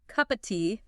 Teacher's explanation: If you are listening for a crisp o sound for of, you will never hear it.